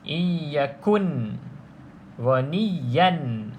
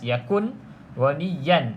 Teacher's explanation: maksudnya tidak boleh dengung eh tidak boleh ada dengung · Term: izhar